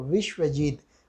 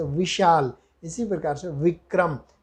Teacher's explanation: ब का उच्चारण स्थान क्या है, ओष्ठ, और जबकि व का उच्चारण स्थान इन्होंने बताया आचार्य दंतोष्ठम, यानी व में ऊपर वाला दंत और नीचे वाला ओष्ठ, यहाँ से उच्चारण होगा व।